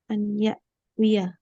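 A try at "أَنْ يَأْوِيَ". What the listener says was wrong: Ya'wi ya. Ya ini fathahkan jelas. Ya kan? Ya.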